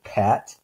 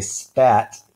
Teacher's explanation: and say spat that puff of air won't be there so we have the P with a puff of air or the aspirated P then we have the P without it or the unaspirated P · if you hold your hand in front of your mouth and say Pat you might feel that puff of air and then if you do the same thing and say spat that puff of air won't be there